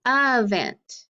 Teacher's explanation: the e is open but it doesn't make the long sound it makes that schwa sound the uh sound it sounds like a short u event and that's how we